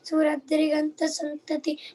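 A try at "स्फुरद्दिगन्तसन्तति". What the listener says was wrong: Acha, not Driganta, Diganta.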